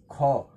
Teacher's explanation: ख एक ऐसा ध्वनि है जो महाप्राण भी है, अघोष भी है, कंठ भी है और स्पर्श व्यंजन है